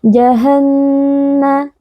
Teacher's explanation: Kita harus melafalkannya dengan suara sengau yang diarahkan ke hidung, lalu menahannya sebentar. Ya. Ini adalah "Mad Thabi'i." Karena terdapat huruf alif yang didahului oleh huruf fathah, maka huruf tersebut dipanjangkan dengan dua harakat. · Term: biarawati dengan shaddah